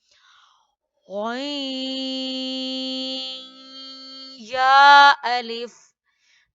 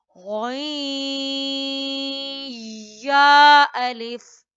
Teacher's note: कैसे, गई, ईज की साउंड आ रहा है, यानी नून या के अंदर क्या हो रहा है, मर्ज हो रहा है। ये ना सिर्फ मर्ज हो रहा है बल्कि प्रोलॉन्ग भी करना है, एक अलिफ के बराबर